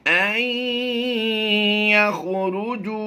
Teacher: نون ساکن کو ہم نے یا میں مدغم کرتے ہوئے ادغام مع الغنہ کرنا ہے